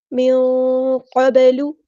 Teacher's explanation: قاف ہمارے heavy letter ہے، پورا ادا کریں گے. با ساکن ہے تو یہاں پہ کلکلا ہوگا، اور لام کی پیش کو صحیح سے ادا کرنا ہے.